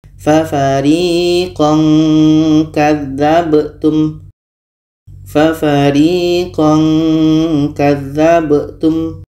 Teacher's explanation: ini ada bunyi Nun maka ketika Kaf ini bertemu dengan tanwin makhroj k tadi kita lihat jauh dari huruf nun maka di sini menghasilkan bunyi nga